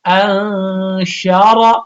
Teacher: شین زبر ش انش، را زبر را انشر، را کے اوپر زبر آ گیا تو را کو بھی موٹا پڑنا